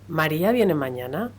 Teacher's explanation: el final de la curva melódica, es ascendente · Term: interrogativa absoluta